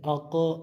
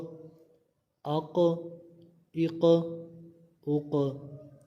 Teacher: اق آواز لوٹتی ہوئی نکل رہی ہے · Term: کلکلہ